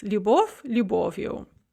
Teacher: the fleeting o does not drop, and the stress remains on the o, which remains in place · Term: fleeting vowel